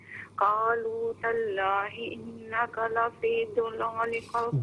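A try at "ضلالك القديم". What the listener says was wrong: دو نہیں ہے، دولا، دود پر زبر ہے. لقل نہیں، کاف کو باریک پڑھیں. دولالیکا، دولالیکل. یہاں پر جو کاف ہے نا اس کو باریک پڑھیں گے اور آگے جو قدیم میں دو نقطوں والا کاف ہے اس سے پر پڑھیں گے.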